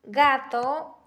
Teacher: Cuando se pronuncia en combinación con las vocales A, O y la vocal U, ¿no? Se articulan en el velo del paladar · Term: velar